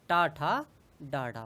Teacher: टा वर्ग जो होता है वो क्या होता है, मूर्धन्य होता है